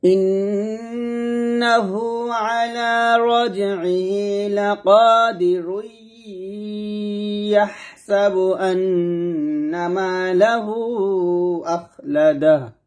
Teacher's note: ইয়ার উপর একটা মনে মনে তাসদিদ দিব, তাসদিদ দিয়ে মিল করে গুন্নাহ করে পড়তে হবে